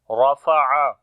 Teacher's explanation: Ra we read in heavy sound due to fatha sign on it. Ain we read from the middle of the throat.